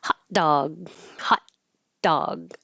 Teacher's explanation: I use the same ah for both hot and dog, and you won't hear the T and you won't hear the G